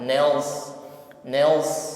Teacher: ada bunyi desis yang mengalir